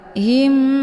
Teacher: segi sifat dan juga makhraj cara baca hukum idgham mimi yaitu mim sukun dimasukkan ke dalam mim yang bertasdid dengan cara ditekan kemudian ditahan lebih kurang dua kali ketukan him ya hukum bacaan idghamimi dibacanya sambil didengungkan w tatiim min